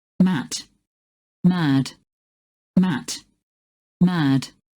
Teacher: In Standard British English and General American English, the voicing effect ensures that vowel length is controlled by the following sound, i.e., a vowel followed by an unvoiced consonant, such as in mat, will be pronounced shorter than a vowel followed by a voiced consonant, such as in mad.